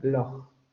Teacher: In some varieties of English, notably Scottish ones, there is a voiceless velar fricative